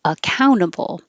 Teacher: This one you can say with the T and be perfect, accountable. But the T is after the N in the unstressed syllable, so you don't have to say the T